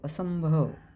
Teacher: असंभव इथे दुसऱ्या अक्षरावर अनुस्वार आहे, म्हणजे त्याचा उच्चार करताना नाकातून होतो